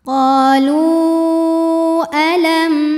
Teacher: huruf lam Panjang boleh empat boleh lima harakat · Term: Mad Jaiz munfasil